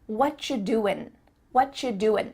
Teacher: the end of the word doing, that G, also gets cut out.